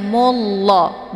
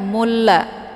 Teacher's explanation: yaitu lafaz Allah yang mesti dibaca tebal karena sebelum lafaz Allah berharakat zummah yaitu mu. Jadi dibacanya mullah bukan mulla, namun ditebalkan mullah. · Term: tafkhim